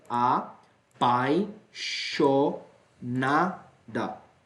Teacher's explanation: vogal e semivogal tem um ditongo e diga-se de passagem um ditongo decrescente